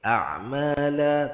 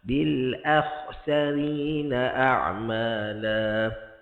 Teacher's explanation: Adapun a'mala, hamzah nipis, ain nipis, semua senyum.